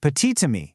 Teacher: that silent T suddenly jumps back to life to link the words. So it becomes petite-ami.